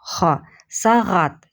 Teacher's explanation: Следующий звук, друзья, это буква Г. Г похож на букву Х русскую по произношению. Тоже задействованы задние части гортани.